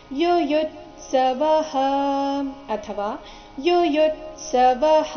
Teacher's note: ಮತ್ತೆ ಪೂರ್ತಿ ಸ ಈ ಎರಡು ವ್ಯಂಜನಗಳಿಂದ ಕೂಡಿದ ಸಂಯುಕ್ತಾಕ್ಷರ ಬಂದ ಕಾರಣ ಯುಯುತ್ಸವಹ ವ ನಂತರ ಇರೋ ವಿಸರ್ಗದ ಉಚ್ಚಾರಣೆ ಹ ಅಥವಾ ಹ ಎರಡು ಸರಿಯಾಗಿದೆ